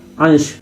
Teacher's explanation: की बिंदी लगाई जाती है जैसे आपने अंश लिखा अंश तो अंश में जो है श के पहले नासिक्य ध्वनि है तो इस नासिक ध्वनि के लिए अनुस्वार की बिंदी इस्तेमाल होगी